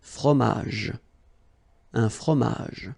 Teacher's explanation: you don't insist on the final J